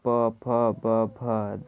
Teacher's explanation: इन अक्षरों का उच्चारण दोनों ओठों का प्रयोग होता है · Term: दयोष्ठ